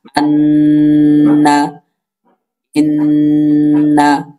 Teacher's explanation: আর আরবিতে বলা হয় খয়সুম। তো ওই খয়সুম বা ওই নাকের বাঁশি হইতে গুন্নাহ উচ্চারিত হয়